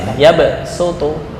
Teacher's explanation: Iya, namanya ibdalus shad bisin dari segi bacaan. Maksudnya mengganti shad cuma dibaca dengan sin.